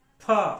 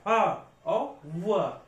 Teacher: दंतोष्ठ व्यंजन, ठीक है, दंतोष्ठ मतलब ओंठ का भी प्रयोग होगा और दांत का भी प्रयोग होगा। देखो, फ, ओंठ का फ और दांतों पे भी जोर आ रहा, फ और व।